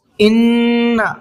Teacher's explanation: نون کے اوپر تشدید ہے تو اس نون کے اندر تھوڑا سا غنہ کر کے پڑھیں گے